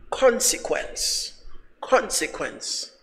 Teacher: The stress is on the first part